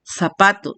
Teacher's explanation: llevan el acento mayor esfuerzo de voz en la penúltima sílaba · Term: palabras graves